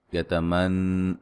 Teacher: یتمن نون مشدد پہ غنہ ضروری ہے